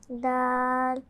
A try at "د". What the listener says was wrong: لمبا کیجئے، دال۔